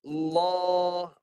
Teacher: Okey, ni lam yang tebal. Lam yang tebal, dia melencong tapi pangkal lidah naik supaya bunyi lamnya tebal ketika mati.